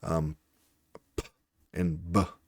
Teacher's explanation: the different plosive sounds, like p and b, are bilabial plosives